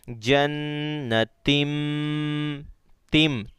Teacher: اقلاب، یعنی گننا ہی کرنا ہے اور تنوین کی آواز اور نون ساکن کو بدل کر میم سے کنورٹ کر دینا